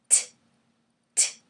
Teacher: It's got a snapping sound, but it's not vibrating. It's not like ah. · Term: unvoiced